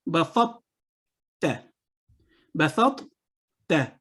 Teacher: جب ہم نے اس کو ملایا تو تا کی آواز پڑھی گئی, تو کی آواز نہیں پڑھی گئی